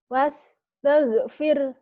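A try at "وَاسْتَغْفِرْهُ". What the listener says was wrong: Wastaghfirah gitu. Wakaf isyarah nih. Firah. Wastaghfirah. Kadang-kadang dia bacanya wastaghfir. Salah. Kalau wastaghfir hunya hilang. Hunya Allah ini. Wastaghfirah. Kalau nggak mau susah, wastaghfirhu innahu kana tawwaba. Jangan berhenti di sini gitu. Wastaghfirah.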